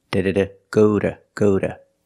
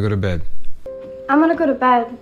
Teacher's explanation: When I say go to bed, the pronunciation changes. The T is a fast D.